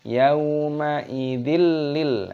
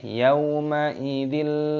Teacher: kasrah tanwin bertemu dengan lam dibaca idgham bila gunnah. Idgham artinya memasukkan bila gunnah tanpa berdengung. Di sini ciri-cirinya ada tasydidnya, kita masukkan yauma idil lil.